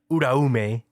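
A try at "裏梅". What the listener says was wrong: Just don't enunciate the U so hard.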